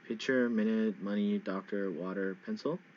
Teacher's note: the front the first syllable is the word stress